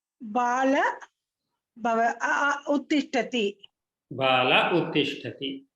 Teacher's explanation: So only the visarga gets omitted or lopaha bhavati.